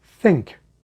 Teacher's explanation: like the snout of the badger to touch your teeth also the th sound that is voiceless so your larynx gateway briefly opens up a bit then while your tongue tip retreats from your teeth your tongue